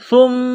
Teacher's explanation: ثم قست قلوبکم من بعد ذلک، ثم سا کو نرم پڑھیں گے، زبان باہر نکالیں گے سا کو پڑھتے وقت۔ میم مشدد ہے تو یہاں سا کو میم کے ساتھ ملانا ہے، میم میں غنہ کرنا ہے، آواز ناک میں چھپانی ہے